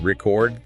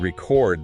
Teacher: record the noun stressing the first bit and record the verb where you stress the second bit.